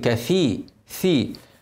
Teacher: الثاء حافظ عليها اوعى تخليها سين